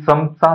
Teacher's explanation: अ लावून ज्याचा उच्चार करतो त्याचं उच्चारस्थान दंत तालव्य आहे.